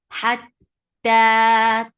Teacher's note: ta will get sifa of shidda, and there is no flow of sound. Hatta, ta is 2 counts long.